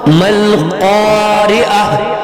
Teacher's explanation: گول تا وقفہ کی صورت میں ہاں میں تبدیل ہوگی اور یہ سینے سے نکلنے والی ہاں ہے